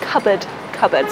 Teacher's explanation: One example would be cupboard. It's got two schwas